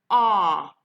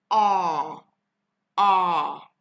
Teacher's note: its technical name is the open back unrounded vowel